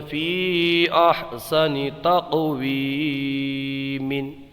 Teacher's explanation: یہاں پر قاف میں قلقلہ ہوگا کیونکہ قاف حروف قلقلہ میں سے ہے اور ساکن ہے